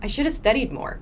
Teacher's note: This is how a native speaker pronounces should have. So you usually do not hear have here.